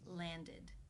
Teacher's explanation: the past tense of this regular verb is landed with the e as in sit and the D sound